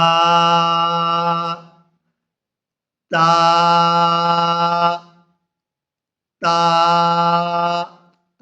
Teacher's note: زبان کی نوک کو اوپر والے دانتوں کی جڑ میں لگائیں گے تو تا ادا ہوگی